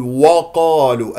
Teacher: الواو مرققه القاف مفتوحه بعدها الف مفخمه مرتبه اولى